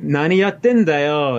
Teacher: the fact that it's going up and not down means the pitch accent is still there